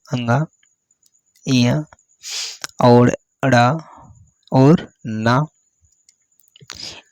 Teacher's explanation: नासिक के वर्ड है। इनके उच्चारण में श्वास वायु नासिक नाक से होकर निकलती है। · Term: पंचमा अक्षर